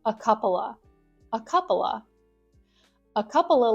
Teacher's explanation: sometimes you might not even hear that V sound at the end of of